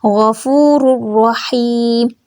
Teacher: یہاں پہ تنوین کے بعد را ہے، یہاں پہ ادغام بغیر گنہ کہ ہوگا